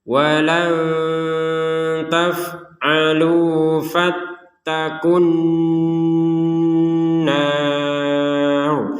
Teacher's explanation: Jadi langsung ku di sini langsung dimasukkan ke huruf nun, kun langsung ke dengungnya. Jadi alif lamnya sudah tidak dibaca, langsung ke nun. Karena ini kalau di dalam tajwid itu kan namanya asyamsiyah, alif lam asyamsiyah, langsung masuk ke nun.